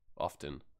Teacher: Often or often? I don't pronounce the T.